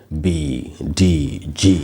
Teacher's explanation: Voice जो consonants होते हैं या कोई भी जो वॉइस साउंड है उसको बोलने में यहां वोकल कॉर्ड्स में वाइब्रेशन होती है। जैसे बी डी जी वाइब्रेशन हो रही है।